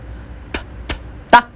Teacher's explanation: For ta, the tongue on top of your upper teeth.